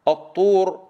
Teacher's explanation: وكلمة الطامة، الطور، الطاء هنا مضمومة، ننتبه إلى ضم الطاء عن طريق استدارة الشفتين، وأيضا إلى أنها مفخمة، وإلى أن الطاء قوية ولا تكون تاء، خاصة إذا كانت مضمومة، لا تقول الطور، قل الطو، الطور.